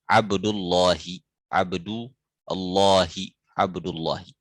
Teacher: tebalkan al-lam huruf lam. Min ismillahi dari ismi dari nama Allah